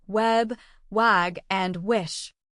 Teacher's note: place your hand on your throat as you say w and notice the vibration this happens because W is a voice sound